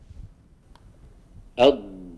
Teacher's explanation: سأعيدها لكم، ولاحظوا بأن اللسان ينتقل من الوراء قليلا، يعني يصطدم، هذه خطوة رقم واحد، يمتد إلى الأمام وانتهى صوت الضاد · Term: الاستطالة